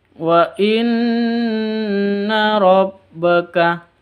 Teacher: Wa inna rabbaka, di sini ada nun tasydid, gunnah musyaddadah. Jadi gunnah musyaddadah namanya dengung, didengungkan 3 ketuk.